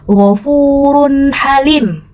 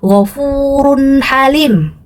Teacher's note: Jadi runnya atau tanwinnya jelas nak ya, tidak didengung-dengungkan.